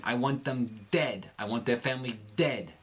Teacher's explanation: you see his tongue actually push against his upper teeth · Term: dentalize the D